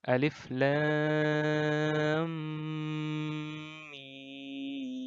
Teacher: alif lam mim. Jadi panjang 6 harokat.